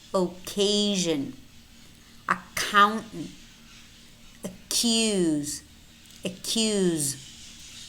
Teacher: Notice how in occasion, accountant, and accuse, it's only one K despite having two C's.